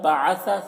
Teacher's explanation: اذ بعث ذال میں قلقلہ نہ ہونے پر اس کا خیال رکھنا ہے، بعث سا کو باریک پڑھنا ہے